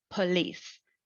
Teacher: it's accented on the second syllable